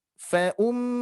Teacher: mim bertasdid lagi, hati-hati didengung.